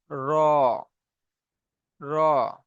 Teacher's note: আগা তো হয়ে গেছে, এই মাথাটা একটু দুমড়ে মতো যাবে, এই মাথাটা একটু উল্টে মতো যাবে। জিভের আগার উল্টা পিঠ এবং তার বরাবর উপরের তালুর সাথে লাগিয়ে উচ্চারণ হয়